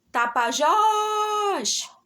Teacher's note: a sílaba mais forte e mais duradoura foi o jós, tá bom? Então, essa é a minha sílaba tônica, essa é a minha sílaba mais forte.